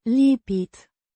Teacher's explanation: Pronounced Lipit. with stress on the second syllable.